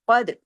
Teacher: ताल पे कलकला कीजिए कफ को हैवी ताल को बारीक